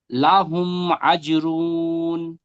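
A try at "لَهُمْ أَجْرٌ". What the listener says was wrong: আজ রুন বলে টান দিচ্ছেন, আজ র দুপে রুন, রুন টান হয় না, তানবিন।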